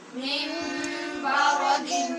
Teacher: من ساکن کے بعد با ہے حرف اقلاب، لہٰذا نون کو میم سے بدلیں گے